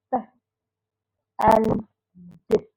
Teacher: produced by completely blocking airflow, then releasing it suddenly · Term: stop or pulsive